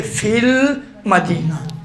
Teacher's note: الف سے پہلے یا حروف مدی آنے کی وجہ سے یہ یا نہیں پڑھا گیا ہے